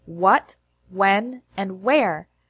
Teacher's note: in the majority of words beginning with WH it sounds like W as in what when and where